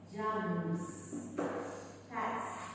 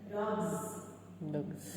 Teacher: the progressive assimilation of voice with the suffixes S and Z. So cats is just S.